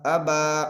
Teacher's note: अलिफ मद्दा को एक अलिफ के बराबर खींच कर पढ़ें।